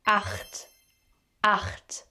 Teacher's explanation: So it's not ich, at least not in high standard German. The other CH sound, which we call ach laut, is produced here in the back of your throat.